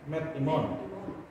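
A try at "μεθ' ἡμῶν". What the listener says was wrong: Ya, bukan met imon, tapi mes. Iya, mes simon. Ya, jadi kata imon. Kalau metaimon artinya beserta kita ya. Methimon.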